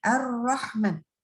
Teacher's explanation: pengucapan huruf nya itu disertai dengan bergetar ujung lidah Nah gini ya kita tutup baca huruf r tekan begini Erna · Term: taqrir